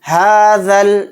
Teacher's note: یہ دونوں الف نہیں پڑھے جائیں گے، ذال کو ڈائریکٹ لام میں ملائیں گے۔ ہاذل، بایا زبر بئی، تا زیر تی، بیتی۔